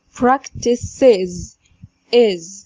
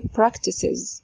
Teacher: اخر طريقة لنطق الاس اللي هي بتاعت السينجلر ان هي تنطق is بكسرة كده